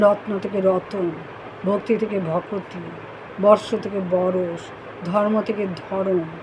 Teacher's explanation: যুক্ত ব্যঞ্জনধ্বনির মধ্যে স্বরের আগমন যদি ঘটে, যুক্ত ব্যঞ্জন দুটির মধ্যে দূরত্ব সৃষ্টি হয় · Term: বিপ্রকর্ষ